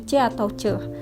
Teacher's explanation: yang melibatkan palatal dan langit-langit keras dan letupan